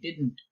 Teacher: the second D is not silent you have to say it didn't